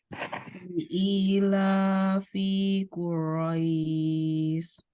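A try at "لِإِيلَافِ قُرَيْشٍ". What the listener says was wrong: Fi-nya pendek ya. Fi-nya pendek. Li'ilafi Quraisy.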